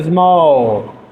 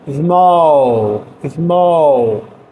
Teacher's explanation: É um O estendido, small. E ele finaliza com U. A boca, ela vai fazer O, small, small, tá?